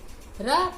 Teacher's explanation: इन ध्वनियों के उच्चारण में जीभ की नोक मसूड़े के पास आती है और अंदर से आती हवा के प्रभाव के कारण वह 2-3 बार कंपन करती है। र प्राकंपित ध्वनि है, इसे लुंठी ध्वनि भी कहते हैं।